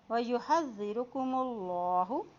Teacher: اللہ کے نام سے پہلے پیش آ گیا ہے تو یہاں پر بھی اللہ کا نام موٹا ہی ادا کیا جائے گا